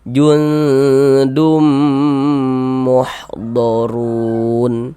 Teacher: Bunyi tanwinnya dimasukkan ke huruf mim. Jangan dibaca dun dibaca dun, jangan dimasukkan ke huruf mim, masuk melebur ke huruf mim. · Jangan dibaca dun dibaca dun, jangan dimasukkan ke huruf mim, masuk melebur ke huruf mim. Nah, kemudian didengungkan dum, di bagian dumnya kita tahan sejenak, suaranya kita panjangkan sepanjang 2 harokat. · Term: idgham bi gunnah